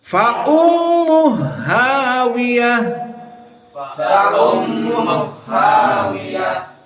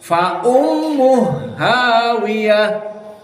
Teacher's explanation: not fa ummuhu ha second half, but make together only 1 ha. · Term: idgham al-kabir